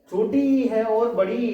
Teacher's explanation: जो दो स्वर है छोटी इ और बड़ी ई ये तालु से निकलते हैं